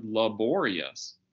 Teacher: if you add a suffix and make the word laborious then the stress goes on the second syllable that o pops out into full life and laborious the first